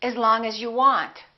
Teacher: The vowel in the preposition generally becomes the neutral sound